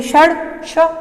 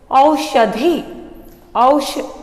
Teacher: श बोलते ही हमारे जीभ का अग्रभाग तालवे से आगे का जो स्थान है वहां जाकर स्पर्श करता है